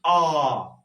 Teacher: आ का उच्चारण करते समय हमारा मुख जो है वो बहुत ज्यादा खुल जाता है, इसलिए हम इसे कहेंगे आ जो स्वर होता है इसे हम कहा करते हैं विव्रत स्वर।